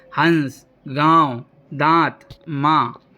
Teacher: इनमें नाक और मुंह दोनों से आवाज़ निकलती है। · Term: अनुनासिक